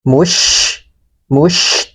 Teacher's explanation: sebarkan nafas huruf syin